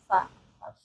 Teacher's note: Untuk makhraj fa itu keluar dari bibir bawah bagian dalam bersentuhan dengan ujung gigi seri atas, fa, atau perut bibir bagian yang bawah, fa.